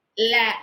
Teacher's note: நாவின் இரு பக்கங்கள் தடித்து மேல் பற்களின் அடியை தொடுவதால் லகரம் தோன்றும் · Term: ஒற்றல் லகரம்